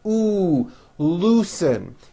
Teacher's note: this has the ooh vowel sound bring your lips forward